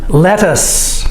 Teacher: this TT does not make the D sound we say it with the T sound